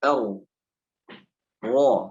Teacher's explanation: Bagaimana cara membaca ro tebal, ya? Cara membaca ro tebal adalah biasa tapi ketika ro-nya tebal, pangkal lidahnya dinaikkan.